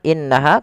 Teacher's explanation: innaha tahankan dulu dua dua ketukan baru dilepas